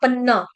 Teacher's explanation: पन्ना double न, अन्न में जैसे होता है वैसे पन्न, पन्ना, डबल न का उच्चारण करेंगे